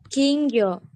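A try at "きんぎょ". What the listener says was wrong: Pintar. Gyo-nya pendek, benar.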